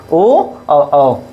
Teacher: इसलिए 'ओ' और 'औ' का उच्चारण गले और होंठ दोनों से किया जाता है।